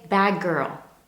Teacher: the D at the end of bad nearly disappears? Instead, it becomes the G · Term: assimilation